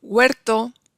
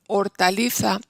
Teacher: en huerto, UE, porque es la tónica, pero en hortaliza, esa es átona. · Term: diptongo